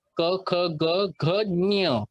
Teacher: त्याचं उच्चारण, ञचं उच्चारण हे नाकातून आलं पाहिजे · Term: अनुनासिक